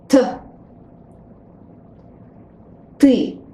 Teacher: When you pronounce it T, the tip of the tongue should touch the upper teeth. Also, avoid this puff of air, this aspiration that comes after English T. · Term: sound T